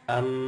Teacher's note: kalau kita membaca mim yang jelas maka bibirnya mingkem am ditekan